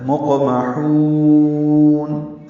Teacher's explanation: آخر میں نون کی اوپر آواز روک لینی ہے · نون کو ہلائیں گے نہیں، یعنی نون ہلا کر ادا نہیں کریں گے، نون پہ قلقلہ نہیں ہوگا